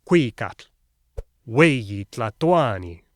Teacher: they stressed the second to last syllable, Cuicatl, Hueyi Tlatoani.